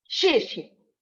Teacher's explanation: if I say thank you, I will say xie xie. That's an abrupt falling tone.